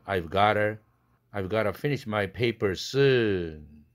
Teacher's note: 중복자음 t 사운드를 하나를 생략시키고 그 다음에 그렇게 되면 모음 사이에 끼었으니까 플랩돼야 되는 환경이죠. 그래서 gotta, I've got to 해도 좋지만 I've gotta finish my paper soon 이렇게 발음되죠.